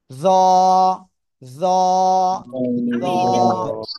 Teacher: জিহ্বার আগা উপরে দুই দাঁতের ওই আগার সাথে লাগাবো, লাগিয়ে আমরা নরম করে একালিফ টানে উচ্চারণ করব।